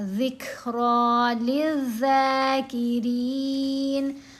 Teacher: تو یہاں ہم نے پڑھا ذک نہیں پڑھنا، ذکرا للذاکرین، را کو باریک پڑھیں گے، زیر آ گئی نا را کے نیچے